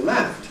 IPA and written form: læft (laughed)